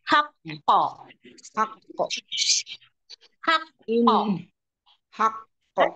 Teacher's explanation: Ditahan di kata haqqo. Itu qalqalah akbar.